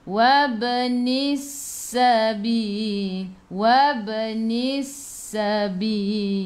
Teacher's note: Matikan dengan huruf lam, hujung lidah menyentuh gusi atas.